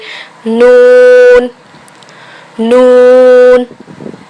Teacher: नून ज़बान का किनारा और दांतों की जड़ के ऊपर तालू की जानिब वाले हिस्से से अदा किया जाता है। नून, ज़बान के किनारों को दांतों की जड़ के ऊपर तालू की जानिब मिलाइए और अदा कीजिए, नून नून।